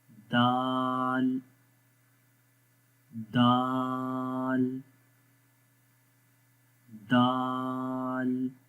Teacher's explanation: ता और दाल के अंदर ज़ुबान एक जैसी रहती है, क्योंकि दोनों हुरूफ को हम बारीक पढ़ते हैं, यानी कि मोटा नहीं पढ़ते।